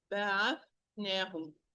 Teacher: Tha, loose letter, continuous sound, حرف الرخ. Voiceless letter, حرف المهموس.